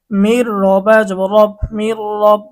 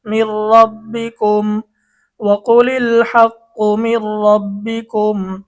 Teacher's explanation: ইদগামে বেলা গুন্নাহর হরফ র এসেছে, এজন্য গুন্নাহ ছাড়া মিলিয়ে পড়তে হবে।